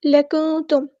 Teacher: نون ساکن کی آواز کو ہم چھپا دیں گے کیونکہ یہاں پہ اخفا ہو رہا ہے